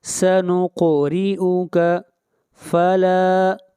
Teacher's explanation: لا کو کھینچ کر پڑھیں گے ایک الف کے برابر، مد اصلی ہے، الف مدہ ہے